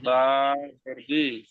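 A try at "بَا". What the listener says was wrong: ওটা বে পড়ছিলেন, ওটা বে হবে না, ওটা বা হবে। বা জের বি।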